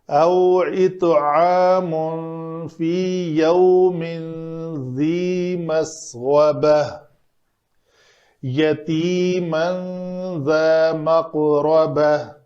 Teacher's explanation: قاف کو پر پڑھیں گے، ساکن ہے تو قلقلہ بھی کریں گے، تو آخر میں تا مربوطہ ہے تو ہائے ساکنہ بنا کر وقف کریں گے۔